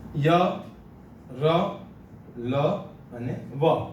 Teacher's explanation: આ બધા અંતસ્થ વ્યંજનો છે જે સ્વર પેટીના નીચેના ભાગમાંથી બોલાય છે.